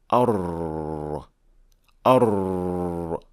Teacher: Takreer is essentially a slight vibration to the tip of the tongue caused by the narrow makhraj or opening, and this small vibration is that unique sound of ra. · instead of going around the tongue, it goes through that small opening between the tip of the tongue and the alveolar ridge, which then creates the unique sound of ra.